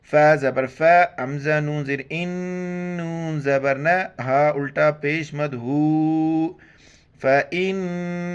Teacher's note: نون پر جب بھی شد آئے وہاں پر ناک میں آواز پیدا کرنی غنہ کرنا ہے